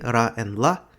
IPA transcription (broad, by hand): ɾ y l